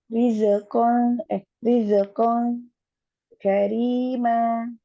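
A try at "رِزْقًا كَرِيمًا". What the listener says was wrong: Tanpa kol-kola zai.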